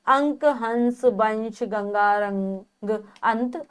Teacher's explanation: जब भी हम अनुस्वार का प्रयोग करते हैं और उसका उच्चारण करते हैं तो केवल नाक से हवा निकलती है, इसी कारण से इसे अनुस्वार कहा जाता है।